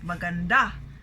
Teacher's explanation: our syllable stress there is the last, maganda, right?